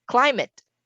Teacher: Climate is stressed on the first syllable.